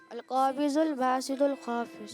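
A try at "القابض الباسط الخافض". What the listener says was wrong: जी अल काबिजु। फिर आपने ज़ात पढ़ा ज़ात को द्वात पढ़ेंगे। अरबी में क्या पढ़ेंगे? द्वात पढ़ेंगे। अरबी में ज़ात नहीं पढ़ेंगे। क्योंकि ज़ात होती ही नहीं है अरबी में।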